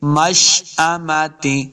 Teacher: مشأمۃ حمزہ اور میم کو لمبا بالکل نہیں کریں گے